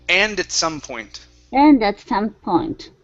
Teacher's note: mush the word at up against and. So it's and at some point.